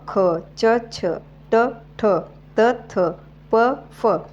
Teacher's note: या वर्णांचा उच्चार करत असतानी कंपन होत नाही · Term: कठोर व्यंजने